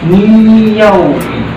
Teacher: nun ini seolah-olah tidak dibaca, dia langsung masuk atau melebur ke huruf ya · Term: idgham di gunnah